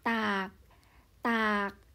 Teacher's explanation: chúng ta sẽ đọc nó với siang ek, tức là thanh điệu thấp.